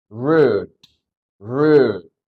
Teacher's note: Oke, di akhir diletupin.